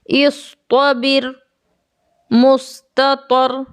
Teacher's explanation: ता और साद दोनों इस्तिला के अक्षर हैं। इसीलिए मैं इनका उच्चारण भारी स्वर में कर रहा हूँ।